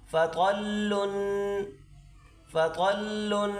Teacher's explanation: آگے دیکھیں، فا زبر فا، طا لام زبر طل لام دو پیش لن، طا لام زبر طل لام دو پیش لن۔ طا کو موٹا کریں اور لام سے ملا کر اس کو ادا کریں۔ فا زبر فا، طا لام زبر طل لام دو پیش لن، فطلن، فطلن۔